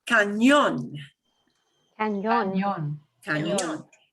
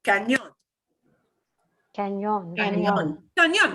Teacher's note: there's an accent mark on the O in cañón. And when you see an accent mark, that means punch that syllable harder.